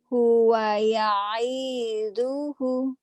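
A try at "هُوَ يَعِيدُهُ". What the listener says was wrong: Enggak ada yang panjang. Hunya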